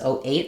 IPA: oʊ